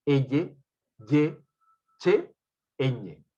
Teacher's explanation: El dorso de la lengua, ya no el ápice, la puntita ya no, sino el dorso de la lengua va hacia la zona del paladar o se acerca a él